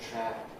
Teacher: The vowel trap, nearly fully open, varied, some people make it a bit closer, trap, others a bit open and trap, down here somewhere.